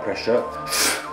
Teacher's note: a very strong but tight release of the air F and it creates a sound of if and then we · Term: voiceless hissing